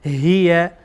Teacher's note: باز هم ها از انتهای حلقه ادا میشه